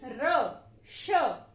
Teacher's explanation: जब हम र और श व्यंजनों का उच्चारण करते हैं तो हमारी जीभ पीछे की ओर जाती है। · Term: मूर्धन्य